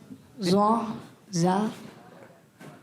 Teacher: ज़बान का सिरा और ऊपर के दांतों के अंदरूनी किनारे से